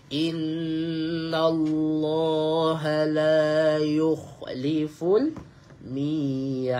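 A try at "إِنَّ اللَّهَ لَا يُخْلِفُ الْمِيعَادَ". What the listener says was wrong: Jangan mi'ad. Dal dia bunyi de saja. Dia akan bunyi de.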